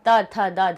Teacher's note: त थ द ध, हमारी जिह्वा जो है, जिह्वा हमारी कहाँ टकराई, दांत से टकराई तो वो दंतव्य बन गए